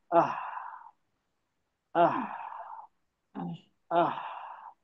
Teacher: इसमें हा में सिर्फ एयर की आवाज है, उसकी साउंड है ही नहीं · आ बोले, आ के बाद सिर्फ मैंने सांस बाहर ली